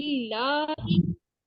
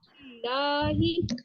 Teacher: लाम के ऊपर एक तो खड़ी जबर है और लाम से पहले जेर है बा के नीचे, तो ये बारीक मतलब कि अदा होगा लाम। और वेरी ये लाम जो 2 फिंगर काउंट होगा।